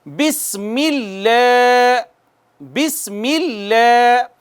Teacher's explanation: سین کے اوپر سیٹی کی آواز آنی چاہیے چونکہ یہ حروف صفیریہ میں سے ہے